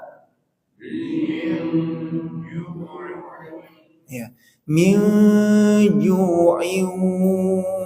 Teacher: ini namanya samar ya ikhfa bukan dengung suaranya samar tanwinnya Maaf Nun sukunnya itu menjadi suara yang samar disertai persiapan huruf yang kedua huruf keduanya di sini Jim berarti suara samarnya di tengah Min